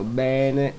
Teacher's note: un accento grave che è l'accento che allunga ed allarga la vocale